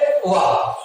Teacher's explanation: तो वकारस्य दंतोष्ठा, यानी वा का उच्चारण स्थान दंत प्लस ओष्ठ होता है। एक वर्ण ऐसा है केवल जिसका उच्चारण स्थान दंत प्लस ओष्ठ होता है, अर्थात दो स्थान से उच्चरित होता है, दंत से भी और ओष्ठ से भी।